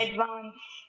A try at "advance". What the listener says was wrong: भाई इतना अमेरिकन हो गया, इसको एडवांस से उतर ही नहीं रहा है. एडवांस Advance.